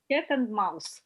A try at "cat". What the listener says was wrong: Cat, not kit, cat.